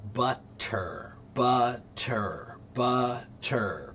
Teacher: when you speed up the word butter, that T begins to sound like a soft D, which is what you call the flap T, which is a stupid name for it.